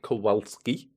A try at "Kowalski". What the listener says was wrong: Well, we could pronounce it properly. Have a V sound in there.